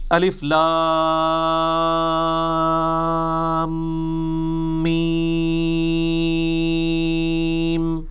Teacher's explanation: میم کے اوپر تشدید بھی ہے، غنہ بھی ہو رہا ہوگا